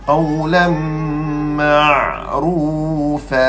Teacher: Ra, sifatnya takrir, getaran.